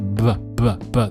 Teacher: in the letter B, we kind of voice the beginning of that